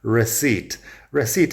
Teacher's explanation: la P no suena como si nada